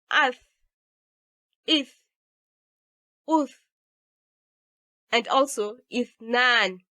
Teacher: So as you try to pronounce 'ath', 'ith', 'uth' and also 'ithnaan', you notice the narrow escaping of the air through the teeth. So Thaa is interdental, fricative, and voiceless.